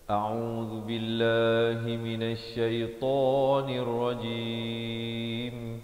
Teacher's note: dengan dibacakan nipis perkataan Allah itu. Dibacakan nipis 2 harakat.